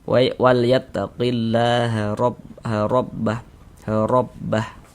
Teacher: huruf ra dibaca tafkhim, dibaca tebal. Sehingga pangkal lisan kita naik terangkat ke atas ketika kita mengucapkannya.